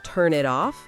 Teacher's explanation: All connected, no gaps between the words. So the N in turn links to the I in it.